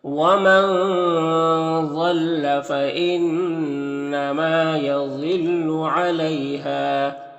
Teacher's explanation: ضاد حروف مستعلیہ میں سے پر پڑھیں گے